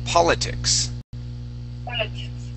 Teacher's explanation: the accent goes at the very beginning of the word politics